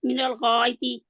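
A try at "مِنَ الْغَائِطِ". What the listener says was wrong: इसको छोटा करें, इसको छोटा नहीं आप करते। तो आप खींचते हैं ना, या छोटी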